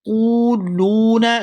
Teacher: یہاں قاف کو واو ساکن کے ساتھ ملائیں گے تو کھینچ کر ادا کریں گے